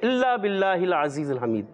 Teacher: तो कोशिश करना है ज़ा की अदायगी और दाल की अदायगी, फ़र्क होता है। तो हमने ज़ा सीटी वाला हर्फ और दाल बगैर सीटी वाला